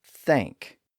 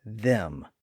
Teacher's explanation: the first is the voiceless sound heard at the beginning of the word thank the second is the voiced sound heard at the beginning of the word them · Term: two th sounds